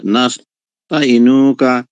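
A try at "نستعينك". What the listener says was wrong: নাস্তাঈনুকা, দেখেন এই যে আইনের পরে ইয়া আছে।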